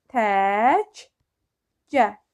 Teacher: birinci k yəni qoşa klardan birincisi olduğu kimi qaldı ikincisi isə özünün qarşılığına çevrildi